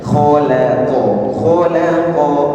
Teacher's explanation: Jadi K tebal, lam tipis, qof tebal. Khqo kholaqo jangan kholaqo lamnya jangan terikut tebal.